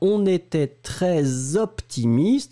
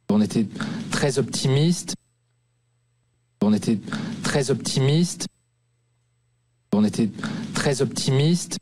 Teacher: he's making the liaison between très and optimiste